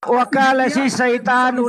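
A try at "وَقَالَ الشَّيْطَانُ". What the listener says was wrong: Salah. Wakolas saito bukan saita tapi saito. Saito. Saito bukan saita. Saito nulamma terus.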